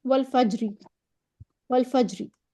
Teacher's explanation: را مکسور کی آدھی حرکت پڑھیں گے تو اس پہ تفخیم ہو نہیں سکتی، کیونکہ زیر پر جو کسرہ ہوتی ہے اس پہ کبھی بھی تفخیم نہیں ہو سکتی، وہ کبھی بھی موٹی ادائیگی نہیں اس کی ہو سکتی.